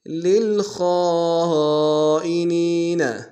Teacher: خاء کو موٹا ادا کریں گے، خاء کے ساتھ الف مدہ و مد متصل ہے، کم سے کم تین الف دال میں کھینچیں گے، نون کو یا کے سامنے آئیں گے، یا مدہ کے دال میں کھینچیں گے۔